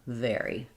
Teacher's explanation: thinking of the W as being a quick slide between u and a wary versus vvary. Just think of the vv sound as being the same mouth position as f like fairy with your voice on